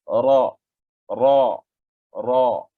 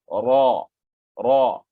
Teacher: Ada sedikit getaran pada permulaan ra tu. Itu dipanggil takrir.